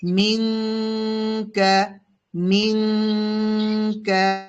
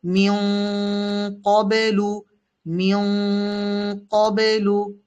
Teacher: কফ এবং কাফ, কফ এবং কাফ, এই দুইটা হরফ যখন নুন সাকিন এবং তানভিনের পরে আসে তখন গুন্নাটা মিলিত হয়, মানে জিহ্বার মাখরাজটা পরিপূর্ণ মিলিত হয়ে গুন্না উচ্চারিত হয়। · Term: ইকফা করিবুম মিনাল ইযহার